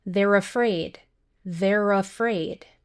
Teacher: The final rrr sound connects to the vowel sound in afraid. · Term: consonant to vowel linking